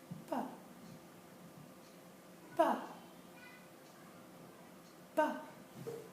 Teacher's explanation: Our mouth opens just a little bit and only a little bit of a puff of an air comes out.